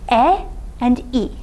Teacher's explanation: unrounded vowels that just means that you articulate e and e the front unrounded vowels in the front of your mouth and without rounding your lips